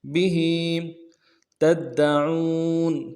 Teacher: کنتم به تدعون، به تدعون، با کو نون سے ادا کریں گے، ہا کے نیچے کھڑی زیر ہے، ایک مقدار میں کھینچیں گے۔ به تدعون، تا کو دال کے ساتھ ملانا ہے، دال کے اوپر تشدید زور دیں گے، اگلے دال کو نرم سے ادا کریں گے۔